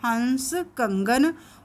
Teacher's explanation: इसका उच्चारण नाक से होता है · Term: अनुस्वार